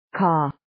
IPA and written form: kɔː (Caw)